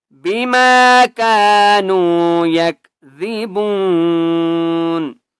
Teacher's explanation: با کو ایک الف کی مقدار کھینچ کر پڑھیں گے